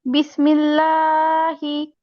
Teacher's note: আল্লাহ শব্দের লামের ডানে জের থাকলে আল্লাহ শব্দের লামকে পাতলা করে পড়তে হয়